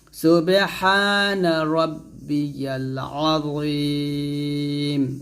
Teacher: রাব্বিয়াল বলতে হবে চাপ দিয়ে মোটা করে